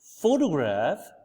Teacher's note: the primary stress is on the first syllable and the other syllables are less stressed